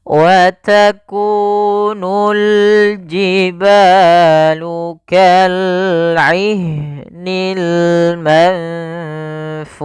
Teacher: ikhfa adalah membacanya ke huruf yang setelahnya atau disamarkan ke huruf fanya.